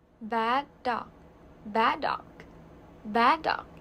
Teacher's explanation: You see we have only one d sound.